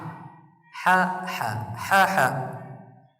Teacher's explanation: Ha termasuk dari huruf wasatul halqi, yaitu keluarnya huruf dari tenggorokan bagian tengah.